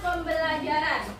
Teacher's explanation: Perubahan bunyinya itu dari prefiks pen berubah menjadi pem karena bertemu fonem B pada kata dasar belajar.